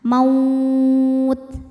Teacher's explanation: Huruf linnya waw sukun didahului fathah, huruf yang disukunkannya ta. Maka jika berhenti dipanjangkan boleh 2, boleh 4 atau 6 harokat asal konsisten dalam sekali bacaan. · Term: madlin